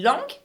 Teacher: we are not pronouncing that final g for the masculine version